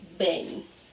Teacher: it sounds as if there is another vowel, maybe an I after the E